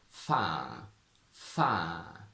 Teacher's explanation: It sounds like an elongated single light ah sound, so I think it's something like fa, fa.